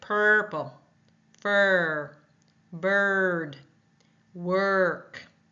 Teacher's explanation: which we will talk about later on it's a r sound tongue is tight and bunched lips are curled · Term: Bossy R, bossy R